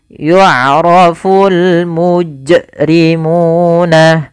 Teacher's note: suara munya dipanjangkan 2 harakat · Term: mad tabi'i